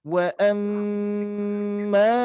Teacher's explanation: mim bertasdid, hati-hati harus kita dengungkan